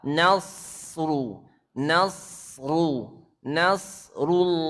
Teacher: perhatikan nasru sod tebal, nun jangan ikut tebal. Nasru, nasru, nasrullahi, lo tebal, lafzul jalalah tebal.